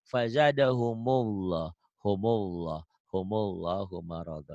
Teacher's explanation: Emang L kan L double. Tapi dalam membaca L double ini, lafzul jalalah ini dibaca tafkhim, tebel atau taglid. Jadi seakan-akan ada W-nya.